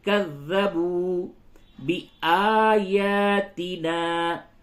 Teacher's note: آ یا اور نا یہ تینوں کو کھینچیں گے. دیکھیے جو الف ہے الف مدہ ہے، اور کھڑا زبر بھی الف مدہ کے قائم مقام ہوتا ہے.